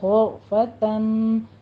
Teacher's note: غین کو پر پڑھنا ہے، را مفخم پڑھی جائے گی